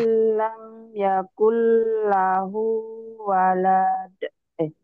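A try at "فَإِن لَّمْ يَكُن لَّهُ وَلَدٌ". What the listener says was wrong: kenapa panjang? Fa'ilam yakun lahu walad. Walad.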